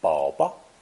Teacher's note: Another way to say baby is 宝宝, with the second character pronounced as a neutral tone.